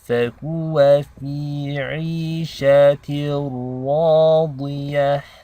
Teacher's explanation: And this ra is heavy because it takes a fatha.